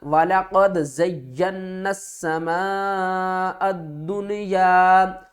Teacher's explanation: حمزہ کو ہم نے دال سے ملانا ہے، درمیان والی الف اور لام کو نہیں پڑھنا